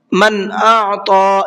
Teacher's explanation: من اعطى، نون ساکن کے بعد میں حمزہ ہے اور حمزہ اظہار کے حرفوں میں سے ہے تو نون کے اندر اظہار کر کے پڑھیں گے، غنہ اخفا کچھ بھی نہیں کریں گے، صاف صاف پڑھیں گے۔ من اعطى اس طریقے سے، اور طا کو پر کر کے پڑھیں گے۔